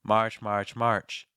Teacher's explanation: Make sure that the R is present, but not the dominant sound. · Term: R sound